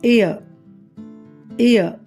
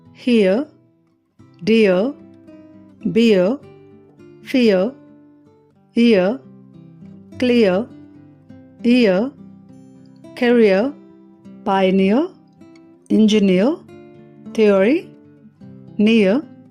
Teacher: ఇయర్ ఇయర్ ఇవి 2 vowels అని మనకు తెలుసు కదా. దీనిని పలికేటప్పుడు మొదటి వొవెల్ నుండి రెండవ వొవెల్కి గ్లైడ్ చేస్తాము. అంటే మొదటి వొవెల్ని పలికి వెంటనే నోటిలో అదే స్థానం నుండి రెండవ వొవెల్ సౌండ్ని ఉచ్చరించడం చేయాలి. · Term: డిప్థాంగ్స్